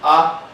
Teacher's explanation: Tenemos la A, es la abierta, vocal abierta, central en español, central, y no redondeada